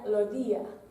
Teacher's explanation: muchas veces no se dice la S, en vez se dice como H. En vez de los días, se diría los días. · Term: aspiración de la S